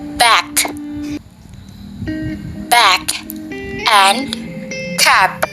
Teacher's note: English contains the following stop consonants: burst and rap. Oral passage is blocked by closing the lips, bilabial.